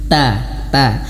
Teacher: gigi seri atas ya tapi lebih condong menyentuh ke langit-langit ini lidah kita menyentuh ke Gigi ya tempatnya tempat tumbuh dan juga menyentuh langit-langit sedikit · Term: huruf ta